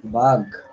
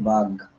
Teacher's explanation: এখানে ঘ ছিল সেটা পরিবর্তিত হয়ে গতে পরিণত হলো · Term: অল্প প্রাণী ভবন